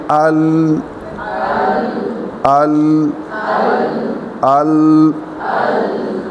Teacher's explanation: زبان کی ٹپ جو اوپر والی دانتوں کی جڑ میں لگتی ہے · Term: لام